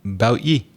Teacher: you quite often gets pronounced ye in Ireland, sometimes in Scotland as well